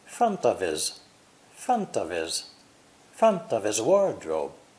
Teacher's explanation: OF is pronounced of with a V, not an F sound, and his is unstressed, so the H is completely silent